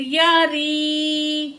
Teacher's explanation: یا ساکن ہے، ما قبل زیر ہے، یا مد ہے، دو الف کے برابر کھینچ کے پڑھیں گے